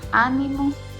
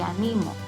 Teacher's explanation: Ánimo tiene su sílaba tónica en la A y animo en la ni.